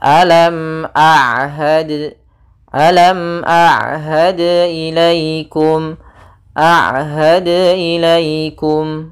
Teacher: ain di antara keduanya tidak terlalu ditahan dan tidak terlalu dialirkan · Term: sifat bainiyah